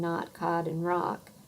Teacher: Those words and words like thought, paw, and caught all sound the same as the vowel sound in not, cod, and rock. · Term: cot-cot merger